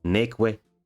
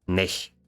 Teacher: there is a reduction and loss of unstressed syllables